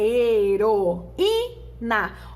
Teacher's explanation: Observe que fica separado o I do O. Então, duas vogais isoladas em sílabas separadas. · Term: hiato